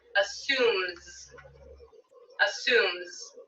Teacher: assume ends with a voiced consonant so i'll add z for the s sound